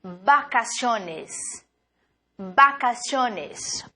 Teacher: b o b tem o mesmo som de B em espanhol não temos o som do V em espanhol